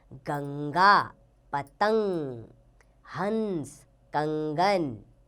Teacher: इसका उच्चारण नाक से होता है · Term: अनुस्वार